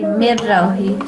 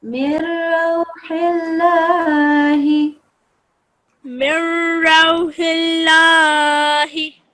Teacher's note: Yeah, and this one, instead of saying mirrauhi, we will say mirrauhi. So this noon sakina will vanish, and we will move from the meme to the ra because of this idgham kamil rule.